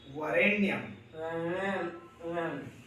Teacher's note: वरेण्यम वही मूर्धन्य न होता है आधा।